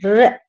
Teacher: बोलकर देखिए, र हमारी जीभ में कंपन होता है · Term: परकंपित